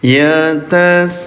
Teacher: Mad wajib mutasil terjadi ketika mad tabi'i ya berhadapan atau bertemu dengan hamzah dalam satu kalimat ditandai dengan tanda alis di atasnya. Maka bunyi sinnya yang asalnya panjang 2 harokat jadi 5 harokat ya